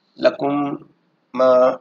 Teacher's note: میم ساکن کے 3 قاعدے ہیں: ادغام، اخفاء اور اظہار۔ میم ساکن کے بعد اگر دوسری میم آ جائے تو ادغام ہوگا، یعنی دونوں میم کو ملا کر غنہ سے پڑھیں گے